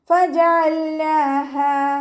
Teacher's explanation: ഫജഅൽനാഹാ, ഫ ലൈറ്റ് ആക്കിയിട്ട് ഉച്ചരിക്കുക. നമ്മുടെ മേലെ മുൻപല്ലിൻ്റെ അറ്റം താഴെ ചുണ്ടിൻ്റെ ഉൾവശത്താണ് വെക്കേണ്ടത്, അവിടെ വെച്ചിട്ട് ഉച്ചരിക്കുക കേട്ടോ.